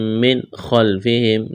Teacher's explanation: نون ساکن کے بعد خا ہے، یہاں پر اظہار کریں گے، غنہ نہیں کریں گے، خا کو موٹا کرنا ہے۔ اللہ، لام میں سختی کریں گے، الف مدہ ہے۔